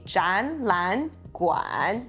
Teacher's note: 展 will become a rising tone, which is a second tone